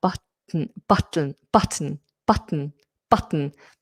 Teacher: Lateral possives is is this sound t or it's where you keep the tip of the tongue up on the on the alvola ridge and sound explodes out of the side